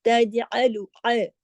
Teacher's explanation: جو عین حرف حلقی ہے تو حلق سے پڑھی.